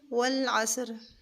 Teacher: صاد کو موٹا کریں گے اور عین کو اس کے مخرج سے ادا کریں گے، اور لام اللہ والے لام کے علاوہ اور لام جو بھی آئے گا اس کو ہم باریک کریں گے۔